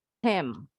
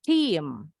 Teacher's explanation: Perbedaan bunyi i pendek dengan i panjang.